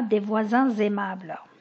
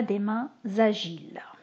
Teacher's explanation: liaison quand le déterminant pluriel précède un mot qui commence par une voyelle. Donc nous avons le son z